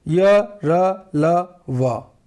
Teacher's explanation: ये है व्यंजन वर्ण, लेकिन ये स्वर की तरह इस्तेमाल हो रहे हैं, यानी कहीं टच नहीं हो रहा है, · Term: अंतस्थ व्यंजन